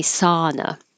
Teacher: Americans pronounce this with a just ah, without the ow. sow, we just say sauna.